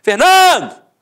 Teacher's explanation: a penúltima sílaba é a sílaba tônica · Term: paroxítona